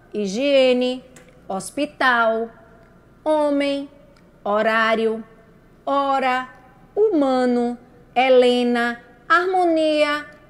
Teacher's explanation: todas essas palavrinhas a gente não escutou nenhum sonzinho no H escuta só o som da vogal a e i o u certo o fonema é só o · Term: o h é mudo